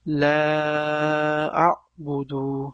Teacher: birinchi boshda turgan la ya'ni besh harakat cho'zib o'qiladi